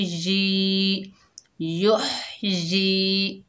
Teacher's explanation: युह, या के नीचे ज़ेर, आगे या साकिन है, ये या मद्दा है, एक अलिफ की मिकदार खींचकर पढ़ेंगे